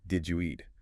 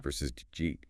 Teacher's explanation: The second one is much more connected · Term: connected speech